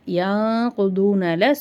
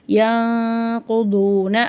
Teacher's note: சுக்குன் பெற்ற நூனுக்கு பின்னாடி காஃப் வருது. காஃப் இஹ்ஃபாவுடைய எழுத்து. அப்போ அங்கே நம்ம குன்னா செஞ்சு ஓதணும். யாங்குதூன அஹ்தல்லாஹில அல்லான்ற வார்த்தைக்கு முன்னாடி ஜபர் வருது.